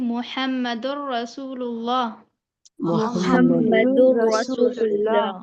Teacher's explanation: دال 2 پیش کی تنوین کو را سے ملا دیں گے، بغیر غنہ کے پڑھیں گے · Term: ادغام تام